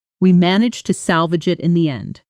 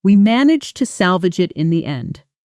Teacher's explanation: the t of to softening and nearly disappearing in fast casual speech